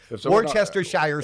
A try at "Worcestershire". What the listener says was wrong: You're adding like 4 syllables and 3 consonants, but okay. Worcester. Worcester, Worcester,